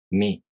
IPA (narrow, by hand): mʲ